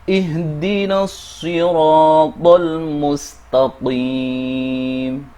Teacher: Kemudian ada ro yang panjang, di sini ada alif yang didahului fathah, yang merupakan mad thobi'i dengan panjang dua harakat